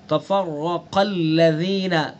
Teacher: را کو بھی پر پڑھیں گے اور قاف کو بھی پر پڑھیں گے. قاف حروف مستعلیہ میں سے تو اس لیے قاف کو پر پڑھیں گے، اور اس کے بعد الذین کو نرمی کے ساتھ پڑھیں گے.